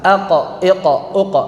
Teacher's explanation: ketika kita mengucapkan huruf qof yang sukun, maka tetap keadaan tafhimnya dalam keadaan tafkhim yang paling sempurna